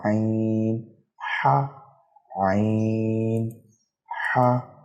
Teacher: عین کو بھی اسی طرح سے ادا کریں گے جس جگہ سے ہا کو ادا کرتے ہیں، حلق سے